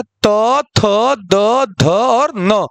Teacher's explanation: ये दांतों का प्रयोग करके हम लोग बोलते हैं, उच्चारण करते हैं, इसमें दांतों का प्रयोग होता है। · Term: त वर्ग